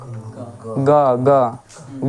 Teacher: ग बोले से कंठ के सहायता से बदल जा रहा है कंठ पर जोर पड़ रहा है तो ग आपका कंठ वाला हो जाएगा